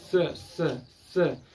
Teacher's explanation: जो जीवा हमारा जो नीचे वाला दांत का पूरा पोर्शन है उसके पिछले भाग पर टच होगा, तब जाके स का उच्चारण होता है।